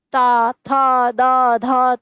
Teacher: त थ द ध तो आपकी जीवा बार-बार बार-बार दांत को स्पर्श करती है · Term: त वर्ग